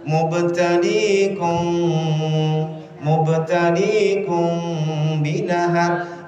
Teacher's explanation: mukanya enggak kelihatan tapi Ma'am tuh itu samar namanya ini juga mim-nya bukan benar-benar dihilangkan tapi masih kentara sedikit itu ikhfa